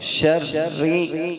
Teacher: شین کو را سے ملا رہے ہیں، را کے اوپر تشدید ہے اس لیے شین کو را سے ملاتے ہوئے را کو دوبارہ پڑھ رہے ہیں۔ شرری، اور را کو باریک پڑھ رہے ہیں کیونکہ را کے نیچے زیر ہے، اگر زبر یہ پیش ہوتی تو را موٹی پڑھتے، اس لیے ہم اس را کو باریک پڑھ رہے ہیں کیونکہ اس کے نیچے زیر ہے۔